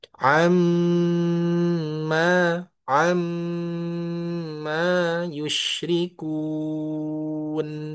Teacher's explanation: Nun tasdid mim tasydid itu harus sempurna tiga ketukan ya. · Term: Ghunah